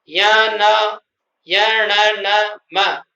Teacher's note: इस तरह से इसके जो 5 अंतिम स्पर्श व्यंजन के जो 5 अंतिम वर्ण हैं, य, न, य, न, म, इनको अनुनासिक व्यंजन कहते हैं, क्योंकि उनका उच्चारण करते समय नाक का प्रयोग होता है, हवा नाक से निकलती है, इसलिए इनको अनुनासिक व्यंजन भी कहते हैं।